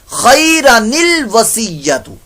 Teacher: جب ہم اس کو ملا کر پڑھیں گے تو پھر خیرن الوصیۃ ہم نے نون قطنی پیدا کرتے ہوئے پڑھنا ہے